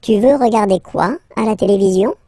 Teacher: let's raise the voice at the end to make it clear that it's a question.